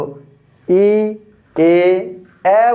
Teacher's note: তো ই এ এ বললে জিহ্বা আরও নেমে আসে, অর্থাৎ আমরা যদি ই থেকে শুরু করি, ই বললে জিহ্বাটা উপরে উঠে যায়, এ বললে আরেকটু নামে, এ বললে আরও নামে, এবং আ বললে জিহ্বাটা ফ্লোরে পড়ে থাকে। মুখের ভেতরে যে ফাঁকা জায়গায় নিচে একদম ফ্লোরে, অর্থাৎ এটা নিচে পড়ে থাকে।